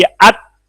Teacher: हमस की वजह से ता में सांस फौरन नहीं टूटेगा. जब आवाज खत्म होगी ना तो फौरन नहीं सांस टूटेगा, थोड़ी देर के लिए सांस जारी रहेगा.